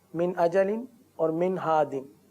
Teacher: इजहार का कायदा, यानी गुन्ना नहीं करेंगे